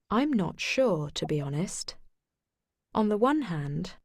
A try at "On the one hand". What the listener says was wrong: ඒ ලස්සනට කියනකොට one එනකොට the කියනකොට අපි the කියනවා. vowel sound එකක් ඉස්සරහා අපි කියනවා. the sound එක අපි ඒක හිමීට කතා කරනවා. මෙයා නම් the කියලාම තමයි කියන්නේ. ඒ රෙකෝඩින් එකේ the කියලා තමයි තියෙන්නේ.